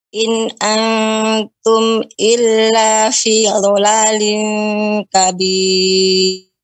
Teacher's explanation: pengucapan huruf dhad, ya, dua tepi lidah. In antum illa fi dhalalin kabir.